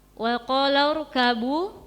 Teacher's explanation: Terus ada ro tafkhim karena didahului hamzah wasal